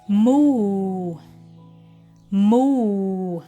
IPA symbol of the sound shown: u: